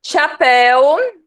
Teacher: ditongo aberto com som de mel na última sílaba